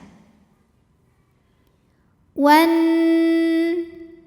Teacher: maka Nun didengungkan bunyi dengungannya tahan kurang lebih dua harakat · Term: ghunah musyaddadah